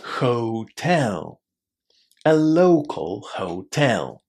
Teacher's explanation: we pronounce the initial H in this word. It's not a silent letter.